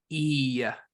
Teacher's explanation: the difference is that hirik Malay has a little bit of a yeah sound at the end of it